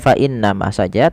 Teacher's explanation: Fa innama, tidak hanya sekedar fa innama saja, tapi wajib ditahan dengan gunnah, dengan sembari memasukkannya ke rongga hidung kita